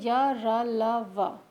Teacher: इनके उच्चारण में जीभ पूरी तरह मुंह के किसी भाग को स्पर्श नहीं करती है। अंतस्थ व्यंजन में क्या होता है, जब हम कुछ भी अपने मुंह से उच्चारण करते हैं तो हमारी जीभ पूरी तरह मुंह के किसी भी भाग को नहीं छूती है।